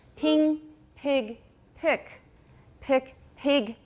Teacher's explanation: can you hear that vowel getting higher and higher